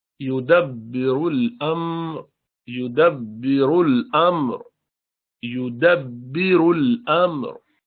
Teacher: रा मोटा है दोनों जगह